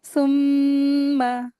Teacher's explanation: میم مشدد ہے، غنہ کریں گے